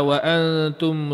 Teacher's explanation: Wa antum jangan sesekali angkat lidah kena kepada langit masa dengung tu. Kalau kena tentu dah tak jadi ikhfa.